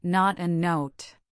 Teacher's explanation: For not the sound is short and open. For note, it is a long gliding sound.